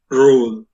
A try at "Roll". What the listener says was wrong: No. Yeah, roll is you spoke without giving extra emphasis on r. Roll.